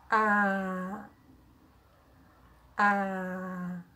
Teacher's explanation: To make a vowel, you need jaw drop, A, and corners of the lips are stretched. They're a little bit larger. A, like a smile. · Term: open A vowel